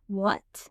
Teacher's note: the second tone is rising like a question.